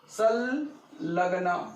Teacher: संलग्न म्हणजे या अनुसाराचा उच्चार डबल ल झाला.